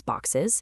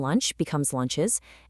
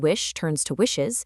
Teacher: We add e s to create a brand new easily pronouncable syllable boxes. The e acts as a literal vocal cushion between the hisses.